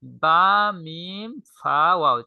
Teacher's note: বা, মিম, ফা, ওয়াও চারটা হরফই ঠোঁট থেকে উচ্চারিত হয়, এই জন্য ঠোঁটের একদম অগ্রভাগী করা হয়েছে, এগুলো লিখে দেওয়া হয়েছে।